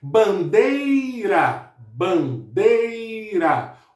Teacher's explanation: É a palavra cuja sílaba tônica é a penúltima, ou a sílaba tônica recai na penúltima sílaba da palavra. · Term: paroxítona